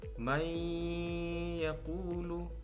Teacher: suara nun mati ini dihilangkan dan diganti seperti Huruf ya bunyinya sehingga ya di sini tampak seperti bertasydid cara bacanya juga disertai dengan dengung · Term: Idgham Bighunnah